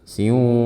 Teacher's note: Dan saat melafalkan idgham bi gunnah pada huruf waw, suara kita keluarkan setengah melalui mulut dan setengah melalui hidung kita